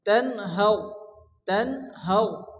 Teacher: র সাকিন ডান দিকের অক্ষরের উপরে জবর আসলে র পুর মোটা করে পড়তে হয়